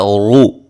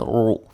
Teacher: ایک ہوتا ہے رو، یہ مکمل حرکت ہے، حرکت کی آواز ہے. ایک ہے رو، یہ حرکت کا تہائی حصہ ہے